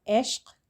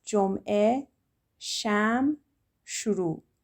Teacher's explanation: Ain doesn't really have an equivalent sound in English, and in Persian it's very soft, so often you don't even hear it. If we look at our examples, we have ishq, so it just sounds like an eh.